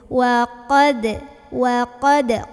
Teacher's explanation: qa-nya naikin pangkal lidah